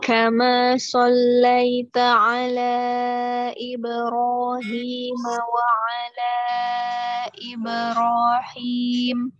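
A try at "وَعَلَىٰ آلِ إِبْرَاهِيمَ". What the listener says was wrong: Alinya mana alinya? Panjang. Wa ala ali Ibrahim.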